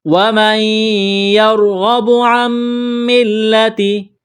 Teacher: تو نون کا میم میں ادغام کریں گے غنے کے ساتھ